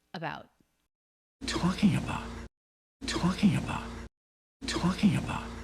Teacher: The pitch falls down because the peak of pitch for this phrase was the stressed syllable of talking. And he does do a stop T at the end. That sound is not released.